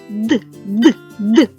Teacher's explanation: звук д приголосний бо повітря що виходить з ротика заважає кінчик язика який стукається об горбочки звук д- дзвінкий бо горлечко тремтить голос працює звук д твердий · чи тремтить ваше горлечко так тремтить тому що голос працює горлечко тремтить звуки д і дь- дзвінки тож Що ж ми · звук д- дзвінкий бо горлечко тремтить голос працює звук д твердий при звуковому аналізі ми будемо його позначати однією